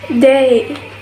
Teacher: This glides from A to E